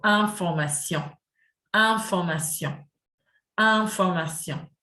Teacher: The IN sound, very common sound, and it is not pronounced in, it is pronounced un, very similar to number 1 in French, UN.